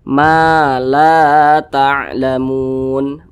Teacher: Ini alif nih, benderanya nih alif, di belakangnya ada huruf yang memiliki tanda baca fathah, maka berarti huruf yang ini dibaca panjang. Matobi'i panjangnya 2 harokat atau kira-kira 2 ketukan.